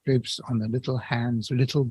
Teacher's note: we wouldn't give the word gold the stress that it might be expected to have